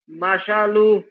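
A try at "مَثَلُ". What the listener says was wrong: মাশা কেন হবে? এই সা এটা শিন না, সা সা মাসালু।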